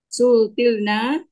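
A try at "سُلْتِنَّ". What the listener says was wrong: Sultinna. Menggunakan nun ya. Bukan lam.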